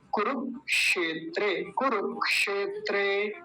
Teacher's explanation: क्योंकि ये जो बीच में जो क्षेत्र में जो ये आया था, ये मैंने कैसे बताया, ये कैसे बनता है, क आधा और मूर्धन्य शकार पूरा, इन दोनों से मिलके बनता है